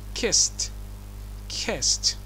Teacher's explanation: في حاله الافعال المنتهيه بحرف voiceless عند اضافه الاي دي فهنا الاي دي تنطق ت.